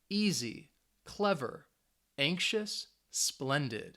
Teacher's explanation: the stress is on that first syllable